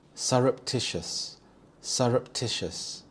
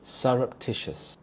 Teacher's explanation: Here the stress is on the third syllable tish